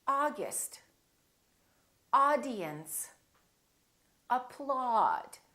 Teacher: we don't say ow and we don't say the British way we don't say Oh we say ah